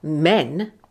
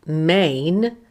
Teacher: men has the monothong e and main has the diphthong a but both words have only one syllable